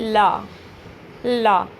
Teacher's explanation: इनके उच्चारण में मुख द्वार बीच में बंद हो जाता है और हवा दोनों ओर से निकल जाती है। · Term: पार्श्विक व्यंजन